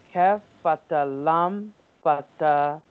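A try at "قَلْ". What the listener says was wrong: There is no fata. Kya fata lam sakin. Lam sakin. Kal.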